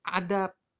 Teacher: Karena ya B pada dasarnya bunyi bersuara, tetapi letaknya di akhir. Sehingga menyebabkan dia diucapkan menjadi bunyi tak bersuara. Yang paling dekat dengan B adalah P, menjadi adab.